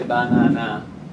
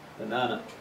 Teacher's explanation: the strong syllable is the second one